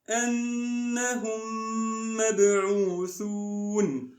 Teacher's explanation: Mix them and do ghunna, the nasal sound, for 2 beats. · They will become as a single word. We will mix through those 2 letters, 2 meme letters, into a single one. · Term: idgham